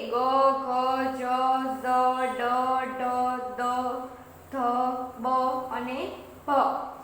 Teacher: ઉચ્ચારણ સમયે નાદતંત્રી સામાન્ય કરતાં વધારે પ્રમાણમાં કંપે ત્યારે તે ઘોષ ધ્વનિ કહેવાય છે.